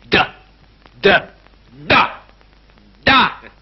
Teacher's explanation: la consonne D, par exemple, se prononce en donnant du bout de la langue au-dessus des dents d'en haut